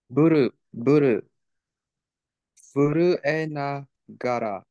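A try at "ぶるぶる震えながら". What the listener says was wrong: Hi, buru buru furue nagara.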